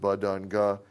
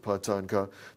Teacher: And it's well known that when you have a phonetic parameter like VOT that has some characteristic short values like those of ba, da, and guh, and some characteristic long values like those of pa, ta, and ka